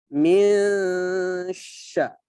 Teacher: sya di sini sifatnya adalah tafashi. Ya, tafashi. Tafashi itu menyebar di mulut.